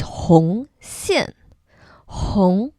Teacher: Hong, the second tone, goes up like hum, but Hong, Xian.